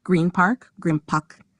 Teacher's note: in green park, the N sound becomes M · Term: assimilation